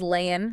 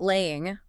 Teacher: Dropping the G? Yeah, dropping that final G sound on ing words is super common in spoken and sung English